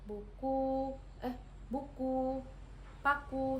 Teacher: vokal U tinggi, atas, belakang dengan posisi mulut tertutup